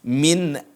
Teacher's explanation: kalau di sini nun sukun bertemu dengan alif di sini tidak didengung